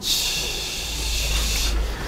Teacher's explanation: Empieza con una expresión, ¿no? Empieza con un cierre total. Ch. Luego termina con fricción. Ch. Se podrá oír la fricción, ¿no? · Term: consonantes africadas